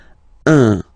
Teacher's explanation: So it's what we call the nasal, so it goes in your nose, okay? So if you listen to me, you don't hear any N